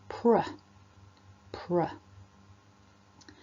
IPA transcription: pr